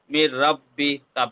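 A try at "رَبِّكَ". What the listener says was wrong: মাশাআল্লাহ, মাশাআল্লাহ, খুব সুন্দর হয়েছে ভাই, খুব সুন্দর হয়েছে।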